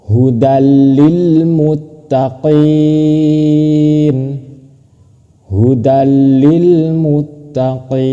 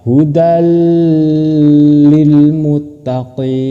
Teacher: Ketika tanwin masuk ke lam itu tidak usah berdengung. Bukan dibaca hudal lil muttaqin itu salah. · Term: idgam bila ghunah